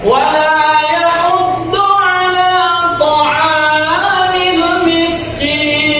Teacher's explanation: Miskin mad alif disukun, dipanjangkan 2 sampai 6 harakat.